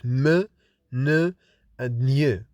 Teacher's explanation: We have nasals, in which the air escapes from the nasal cavity or from the nose when we lower soft palate, like when we produce m, n, and ny. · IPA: /m, n, ŋ/